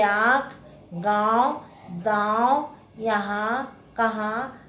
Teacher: इसका उच्चारण नाक और गले से होता है। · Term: अनुनासिक